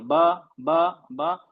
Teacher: क्योंकि इसमें हम दोनों लिप्स का इस्तेमाल होता है। अब दोनों होंठ बंद होंगे, दोनों होंठ मिलेंगे, तब बा लगेगा, बा बा बा, दोनों होंठ आपस में मिलेंगे।